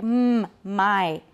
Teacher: The velum is down, it's open. So the air is going out through the noise, through the nose, all right? · The two lips are together, right. Upper lip and lower lip are together to make mm, my. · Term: bilabial nasal stop